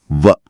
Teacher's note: கீழ் உதடு மேல் வாய்ப்பல்லை பொருந்துவதால் பிறக்கும் எழுத்து